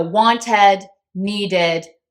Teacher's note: reason why is because I can't say want or want D I need an extra syllable I need that extra vowel plus D sound